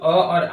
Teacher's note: जो अ है कंठ से निकला ध्वनि है। कंठ से।